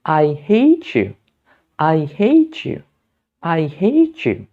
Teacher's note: Di situ ada kata hate yang berakhiran bunyi te dan you yang berawalan bunyi ya. Sehingga kita perlu meleburkannya menjadi bunyi ce.